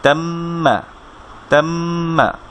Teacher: গুন্না মানে নাকে সাউন্ড করে এই উচ্চারণটা করতে হবে।